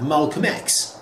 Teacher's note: It's not Malcolm. You don't hear the L. It's Malcolm, and it's X.